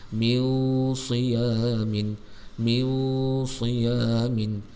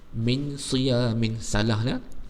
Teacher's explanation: Mesti kena nun tu, menyembunyikan nun tu mesti kena dengung.